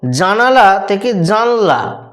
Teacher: দন্তন্যের সঙ্গে এখানে আকারটা লুপ্ত হয়ে গেছে · মধ্যস্বল্লপের ক্ষেত্রে শ্বাসবায়ুটা পড়বে প্রথম স্বরধ্বনির ওপরেতে, তাই দ্বিতীয় স্থানে বা মাঝে স্থানে স্বরধ্বনিটা লুপ্ত হয়ে যাবে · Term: মধ্যস্লোপ